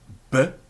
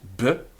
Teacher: it's labial, both of our lips are being used